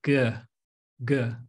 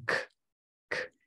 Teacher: For example, the G sound. If you say G, it's voiced, while the K is not. Even though your mouth position's the same, you have to say g and k.